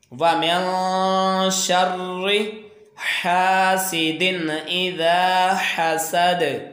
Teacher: और ये दाल जब वक्फ़ करेंगे तो दाल साकन हो जाएगी, ये ज़बर ख़त्म हो जाएगी और दाल के ऊपर जज़म आ जाएगी। तो ये दाल जब साकन होता है तो ये हुरूफ़ कलकला है, तो इसको जुम्बश के साथ इसको यहाँ पे कलकला करके वक्फ़ करेंगे